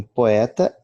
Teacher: Numa ou noutra palavra, como em poeta, é que as duas vogais são pronunciadas distintamente.